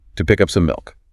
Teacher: all those little words like I went to this to pick up some, is reduced and compressed to serve those 3 peaks of information